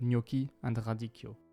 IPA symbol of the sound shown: k